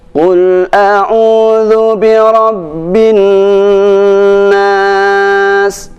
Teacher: Nah, pada bacaan bin nas inilah pada huruf nunnya itu harus ditahan sampai 3 harokat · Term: dengung